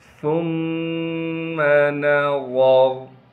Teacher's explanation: جب را پر وقف کریں گے پھر بھی را کو موٹا پڑھنا ہے